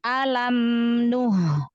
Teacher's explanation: mim sukun punya sifat bainiyah ya. Jadi alirkan sedikit. Alam nuh. Haknya kasih sifatul hamas, lalu rohwah haknya ya.